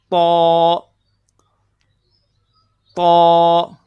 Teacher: یہاں پہ دیکھیں، تا کا جو مخرج ہے وہ ہم زبان کی نوک اوپر والے 2 دانتوں کی جڑوں کے ساتھ لگائیں گے، پھر بولیں اپنی زبان کی نوک کو اوپر والے دونوں دانتوں کی جڑوں کے اوپر رکھ کر پھر بولیں تو تو۔